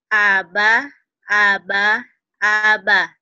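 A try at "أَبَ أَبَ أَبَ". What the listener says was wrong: Abah mah ada di Sukabumi sih, abah. Aba, A, B, A. Aba. Ya, kalau abah tulisannya ada hanya. Aba, aba, aba. Jangan abah ya. Aba, aba, aba.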